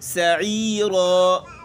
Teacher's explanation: سین سختی سے اور را موٹا ہے